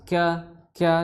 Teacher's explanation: di pangkal tenggorokan bertemu dengan pertengahan langit-langit atas ka disertai dengan hembusan nafas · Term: kaf